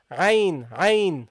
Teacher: the ayn is from the middle of the throat